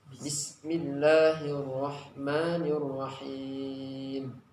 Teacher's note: huruf sin ada sofirnya. Maka ini ada desisnya. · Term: desis yang kuat